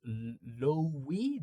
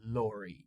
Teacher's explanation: But not really, because after the R, now you have another vowel sound. So when the R is sandwiched between two vowel sounds, again, you cannot remove the R in British English. You have to say it.